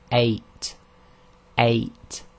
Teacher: So if you say 8, 8, you'll feel that your bottom of your throat closes very slightly for a very short time, and that's actually called the glottal stop, and in Arabic it's represented by the Hamza.